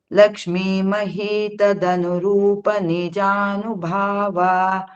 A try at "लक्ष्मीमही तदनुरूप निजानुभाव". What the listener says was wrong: ಭಾವ ಅಂತ ನಿಲ್ಲಿಸಬಾರ್ದು, continuity ಇರಕ್ಕೂ as if you are going to continue. ಯಾಕಂದ್ರೆ ನೆಕ್ಸ್ಟ್ ಲೈನ್ ಆಮೇಲೆ ಸೇರಿಸ್ಕೋತೀರಾ. ಲಕ್ಷ್ಮೀಮಹಿ ತದನುರೂಪ ನಿಜಾನುಭಾವ